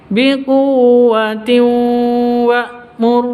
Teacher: Cara bacanya masuk ke wawu disertai dengan dengung karena bacaan idgham bi gunnah. Tanwin masuk ke wawu disertai dengung 2 ketukan.